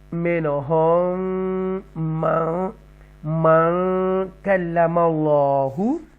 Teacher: after a nun sakina, kaf is coming and the kaf come from ikfa letters, so we make guna here. Minhum man kallama Allahu, تفخیم کے ساتھ اللہ کو پڑھیں گے موٹا bold. · اب یہاں پر ادغام شفوی ہوگا، ڈبل میم آ رہا ہے، اور ساتھ ہی اکفا، نون ساکنہ کے بعد کاف اکفا آ رہا ہے.